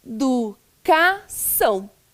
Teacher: O tio em cima do A, porque o A faz o som de ã, né? Fica nasalizado.